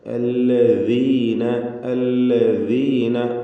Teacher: ദാലിൻ്റെ മഖ്റജ് എന്ന് പറഞ്ഞാൽ നാവിൻ്റെ അറ്റവും മേലെ മുൻപല്ലിൻ്റെ അറ്റവുമാണ് ദാല്